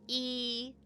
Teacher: a close front vowel is going to be where your jaw is almost closed and your tongue is really, really close to the top of your mouth, to the roof of your mouth.